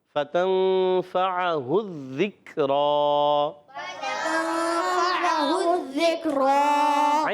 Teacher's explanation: نون کو چھپاتے ہیں، نون کو ظاہر نہیں کرتے اور غنہ بھی کریں گے، ناک میں آواز لے جائیں گے. اور فا پر زبر ہے. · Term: اخفا